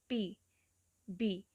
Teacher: ਜਦੋਂ ਆਪਾਂ ਪੀ ਬੋਲਾਂਗੇ ਤਾਂ ਇੱਕਦਮ ਹਵਾ ਰੋਕ ਲਈ ਆਪਾਂ, ਠੀਕ ਹੈ, ਕਲੋਜ਼ਰ ਹੋ ਗਿਆ ਹਵਾ ਦਾ ਔਰ ਦੈਨ ਆਪਾਂ ਰਿਲੀਜ਼ ਕਰ ਦਿੰਦੇ ਹਾਂ, ਇੱਕਦਮ ਹਵਾ ਨੂੰ ਛੱਡਦੇ ਹਾਂ. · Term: ਪਲੋਜ਼ਿਵ